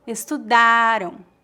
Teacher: A sílaba forte da palavra estudaram é a penúltima sílaba, da. O som AM no final é bem fraco, estudaram.